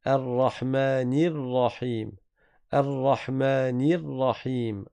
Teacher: ne faites pas l'erreur de transformer la kasra du noun en fatha ou en quelque chose qui est entre les deux. On ne dit pas Ar-Rahman Ar-Rahim.